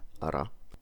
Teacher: a trill like ra with only one tap, ara, one pronounces what is called a tap.